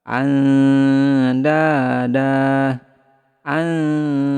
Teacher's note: Nun sukun bertemu dengan huruf dal, maka samarkan nun sukunnya, kemudian tahan 2-3 harokat, kemudian lidah kita bersiap ke huruf dal.